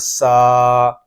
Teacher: سین حروف صفیریہ میں سے ہے، اس میں سیٹی کی آواز بھی آئے گی